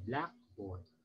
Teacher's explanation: So when you say the word Blackboard you put the stress on the word black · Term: word stress